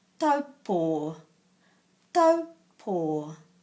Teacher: that letter O at the end is pronounced long because of the macron